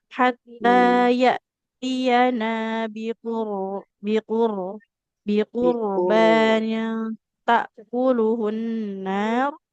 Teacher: huruf ro-nya tebalkan karena ro sukun yang didahului dhammah.